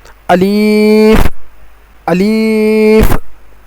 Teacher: الف کا مخرج منہ کے خالی حصے سے نکلتا ہے